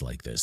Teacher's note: Vocal fry is the low end of the voice like this that gets real croaky